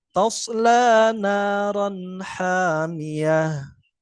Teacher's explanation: apabila nun sukun atau tanwin bertemu dengan ha dibaca jelas